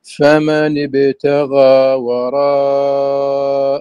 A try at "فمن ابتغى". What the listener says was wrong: فمن ابتغى تفخيم الغين المفتوحة التي بعدها ألف الياء فمن ابتغى